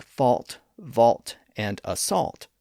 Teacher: But when scholars added the L back in to reflect the ancient history of those words, it affected the way some people pronounced them. Over time, fault, vault, and assault all started to acquire a slight L sound in their pronunciation based on the influence of the spellings